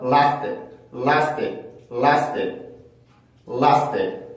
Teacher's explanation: T처럼 연음이 되지 않고 띠 이렇게 소리가 바뀌게 돼요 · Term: 된소리